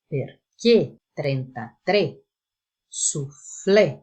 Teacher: nós colocamos um acento agudo, porém, a pronúncia é de um E fechado